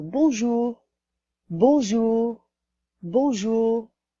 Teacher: The R is there, but very, very slightly. It's not a very strong R sound like you might have in English.